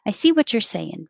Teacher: casual on line 13 i see what you're saying say yin taking off the ing and making it in